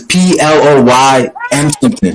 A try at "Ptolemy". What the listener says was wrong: Ptolemy. Ptolemy. Don't say the P. The P is silent. It's Ptolemy.